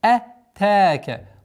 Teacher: Удлинение в размере двух огласовок, огласовки фатха.